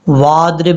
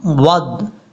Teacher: آپ نے واو کو جب ضاد کے ساتھ کنیکٹ کرنا ہے، یہ جو بیچ میں آپ کو حمزہ نظر آ رہا ہے اس کو آپ نے نہیں پڑھنا